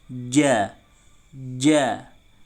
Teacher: ja itu tengah lidah ini naik ke atas langit-langit. Tengah lidah naik ke atas langit-langit.